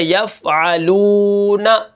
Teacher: اب یہاں پر دیکھیں یہ جو واو ہے یہ واو مدہ ہے۔ واو مدہ کو ہم کیا کریں گے، ایک الف کے برابر کھینچ کر پڑھیں گے